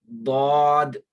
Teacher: मखरज number 8 में ऊपर वाले जो आपकी दाढ़ें हैं, ऊपर वाली जो दाढ़ें हैं लेफ्ट साइड वाली, उनसे जुबान का ये वाला हिस्सा, हाफाई लिसान, जुबान का लेफ्ट साइड वाला किनारा ऊपर वाली 5 दाढ़ों से मिलाते हुए दौद ये अदा होगा